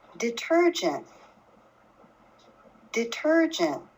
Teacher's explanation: the ter was the point that my voice raised the most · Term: stressed syllable